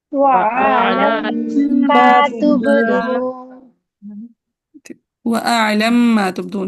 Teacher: پھر وہ اعلم ما دو میم ساتھ آ رہے ہیں اسی کا ادغام ہوگا